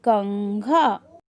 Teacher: कंघा में हमें अंग की ध्वनि सुनाई दे रही है